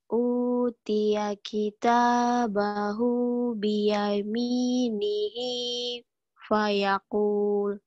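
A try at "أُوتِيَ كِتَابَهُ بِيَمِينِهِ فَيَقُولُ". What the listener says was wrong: Lagunya masih kayak truk truk buatan banyak naik nanjak. Iya, datar aja. Utia kita bahu biyaminihi fayakul. Gitu bisa, nggak usah pakai lagu, yuk.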